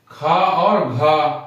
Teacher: जिनके बोलने के बाद वायु ज्यादा निकले वो हो गए हमारे महाप्राण